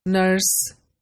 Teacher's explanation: one of the features of Southland dialect is the sound r, the rhotic r sound